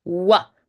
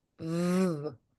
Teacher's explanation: So very would come out as wary. So make sure the W has the round lip shape like a donut, while the V is made with that bottom lip touching the top teeth.